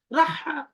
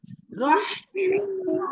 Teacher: بسم الله بسم الله الرحمن الرحيم সুন্দর করে বলেন বিসমিল্লাহির রহ রহ তখন বলবেন না রহটা হাকে যখন ধরবে তখন খুব খেয়াল করবেন এই হার সাউন্ডটা খুব কন্টিনিউ হবে। হ্যাঁ, গলার ভিতর থেকে বাতাস বের হবে, বাতাস আসবে, তখন বুঝবেন হাটা আপনার কন্টিনিউ আছে। আপনি আওয়াজ বন্ধ করে দিলে কিন্তু হাটা হবে না, ঠিক আছে?